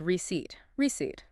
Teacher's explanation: The stress is on the second syllable, and it sounds like receipt. · the P in receipt is completely silent. You do not pronounce it at all.